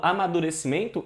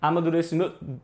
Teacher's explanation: Esse N, ele apenas nasaliza a vogal anterior.